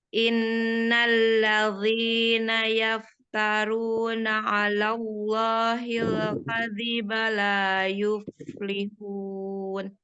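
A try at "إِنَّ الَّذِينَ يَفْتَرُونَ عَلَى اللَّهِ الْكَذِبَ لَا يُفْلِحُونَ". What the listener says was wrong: Ya, Umi itu masih pakai zo itu. Geseknya di tempat zo. Geseknya ke depan lagi di tempat zal, ujung lidah. Sama makhraj, tapi yang membedakan hanya sifat. Satu tebal, yang satu tipis. Maunya yang tipis, Mi. Innalladzi, nggak zi, nggak zi. Zi. Naik itu pangkal lidah. Turunkan pangkal lidahnya, nggak boleh naik.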